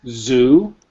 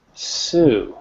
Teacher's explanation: It's very, you get a lot of vibration. It's like, zzz, right? Like a buzzing bee. But with Sue, it's unvoiced. It's a very soft, like you're saying, shh.